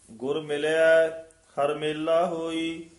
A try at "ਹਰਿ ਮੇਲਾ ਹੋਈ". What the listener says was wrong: ਹਰ ਮੇਲਾ ਇਕੱਠਾ ਨਹੀਂ ਕਹਿਣਾ, ਹਰ ਮੇਲਾ ਹੋਈ।